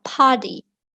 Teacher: Kalau American English itu huruf T, kemudian di depan sama di belakangnya itu ada vowel, biasanya dia bacanya itu jadinya D